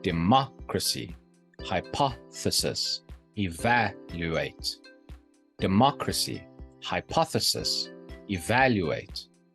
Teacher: the third to last syllable is stressed democracy hypothesis evaluate democracy hypothesis evaluate see how they are stressed · Antepenultimate stress. The third to last syllable is stressed. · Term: anti penultimate stress